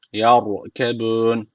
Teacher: Mim mlihi yar ra harfi cezim almış. Öncesindeki harf üstten bağlandığı için ra harfi burada kalın okunması gerekiyor.